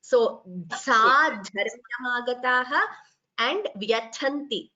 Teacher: the Mahapranas should be clearer. So, Sadharmyamagataha and Vyathanti, Tha is Mahaprana.